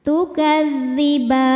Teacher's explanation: Maka ba-nya panjang, boleh 2 boleh 4 atau 6 harokat asal konsisten dalam satu kali duduk. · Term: mad arid li sukun